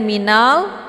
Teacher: alif lam al-qamariyah, jelas bunyi lamnya